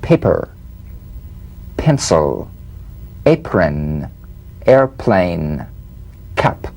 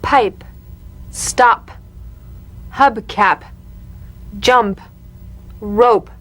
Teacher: The unvoiced labial stop consonant. The whispered tap of this drumbeat P is played with a light springing apart of the lips, just like for the B.